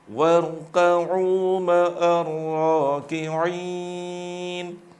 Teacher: Tidak perlu dengan memonjongkan bibir war, tapi cukup lidah bagian belakang yang dinaikkan. warka'u ma'ar raki'in.